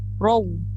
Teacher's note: Ro tu dah betul tapi mesti bunyikan waw hujung dia, jangan taro je.